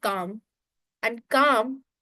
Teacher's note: In the word calm, there is no L meaning there is no sound of L. Which means you just have to pronounce the sounds of C, A, M. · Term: silent letter